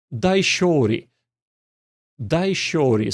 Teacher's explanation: the intonation starts rising and goes to shori. And ri kind of goes down. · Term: pitch accent